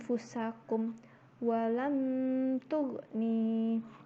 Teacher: cara membaca ikhfa ini adalah dengan samar dan mendengung antara idhar dan idgham. Nah, panjang dengungannya itu 1 alif atau 2 ketukan. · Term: ikhfa hakiki